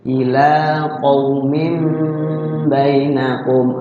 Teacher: ya tanwinnya berubah jadi mim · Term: iqlab